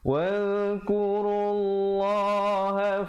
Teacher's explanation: lafzul jalalah datang sebelumnya baris dhammah, yakni baris depan. Bacalah dengan tebal. Kadar panjang 2 harakat.